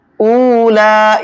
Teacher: یہاں پر واو مدہ ہے، ایک الف کے برابر کھینچ کر کے پڑھیں گے